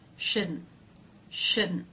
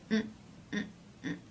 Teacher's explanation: the T here is a stop which means it's going to stop the sound it's going to be an Abrupt short the end sound n